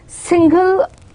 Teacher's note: the stress is more on sing rather than gull, that is the second syllable